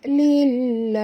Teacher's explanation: lam pada lafaz jalalah dibaca tipis kerana lam ini berbaris di bawah